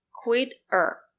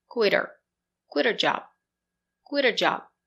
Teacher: if you link the words her is not an important word we do not pronounce h so we say er quit er the letter t is between